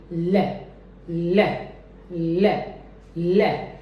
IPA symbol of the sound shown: l